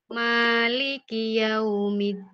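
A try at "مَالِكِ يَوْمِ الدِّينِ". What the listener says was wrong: Coba ibu bilang li l li li l li jangan ditekuk lidahnya.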